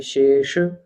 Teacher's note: अब ये शेष, शे तालव्य शा है, तालु से जीभ का स्पर्श होगा, और शा ये मूर्धन्य शा है, तो इसका मूर्धा से स्पर्श होगा